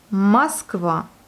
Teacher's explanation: Donc Moskva, voyez, le O n'est pas accentué, il se prononce plutôt comme un A et non pas comme un O